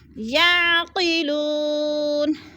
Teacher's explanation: مدہ، وہ ساکن سے پہلے لام کے اوپر پیش ہے تو وہ مدہ کو 1 الف 2 حرکات کے برابر لمبا کر کے پڑھنا ہے